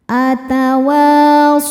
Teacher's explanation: ada hukum harfulin sebab ada wau sukun sebelumnya berharakat fathah. Cara bacanya dilembutkan atau dilunakkan.